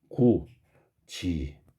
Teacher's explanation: DT가 지치로 발음되는 현상입니다. 그러면 이 녀석의 지읒 치읓이라는 게 바로 구개음이니까 구개음이 아니던 게 구개음으로 발음되는 현상, 구개음화예요.